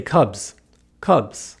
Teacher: Cubs, not cubus, right? The S receives some voice because the preceding sound, B, bu, is a voiced consonant.